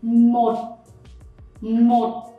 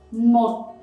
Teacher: you don't say a T very strong and you make it quite short because of the dot.